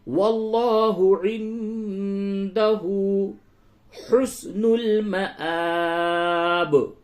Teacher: نون ساکن کے بعد دال ہے، اس جگہ پہ اخفا ہوگا